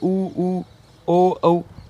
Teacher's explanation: वृत्ताकार स्वर वे स्वर जिनके उच्चारण से होठों की आकृति वृत्त के समान गोल हो जाती है